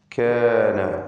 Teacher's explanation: കാഫും തന്നെ ഇസ്തിഫാലിൻ്റെ ഹർഫാണ്, തർക്കീഖാണ്. അതിനെ ദീർഘിപ്പിക്കുന്ന അലിഫിനും തർക്കീഖ്. നേരത്തെ ഇബ്രാഹീം എന്ന് പറഞ്ഞ അലിഫിൻ്റെ പൂർണ്ണമായും വ്യത്യസ്തമായ ശബ്ദമാണ് ഇവിടെ.